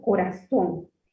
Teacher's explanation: La sílaba tónica estaría en la son